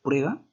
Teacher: Bilabial, porque al momento de decir prueba, junta tus labios.